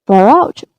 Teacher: far out will contain the linking R sound because the next word starts with a vowel sound.